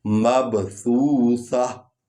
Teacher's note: سا جو ہے یہ ثنایا علیہ سے، یعنی اوپر والے جو دانت ہیں، 2 دانت ہیں، ان کے ساتھ زبان آ کر تھوڑا سا ٹچ ہوتی ہے تو یہ سا ادا ہوتی ہے، نرم انداز میں ادا ہوتی ہے۔